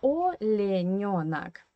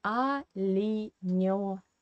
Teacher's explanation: Here we have three weak positions here, yeah, without stress. That's why E unstressed we pronounce as E, and O unstressed we pronounce as A. That's why in Russian language we say Alinionak.